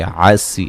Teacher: عین کو واضح نکالیں گے، سین کو باریک سیٹی سے، یا مدہ ہے تو وقفاً را کو باریک پڑھیں گے، ملانے کی صورت میں را کو موٹا پڑھا جائے گا۔